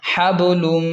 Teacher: لام میم دو پیش لم، لام کو میم کے ساتھ ملا کر پڑھیں گے کیونکہ میم حروف یرملون میں سے ہے تو یہاں ادغام بھی ہوگا اور تنوین کی وجہ سے غنہ بھی ہوگا. حبلم، اس طرح.